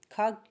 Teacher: स्पर्श व्यंजन कंठ ध्वनि अघोष और महाप्राण ध्वनि है